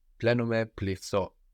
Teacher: we have the th there, deleting the n, but the vowel changes a little bit too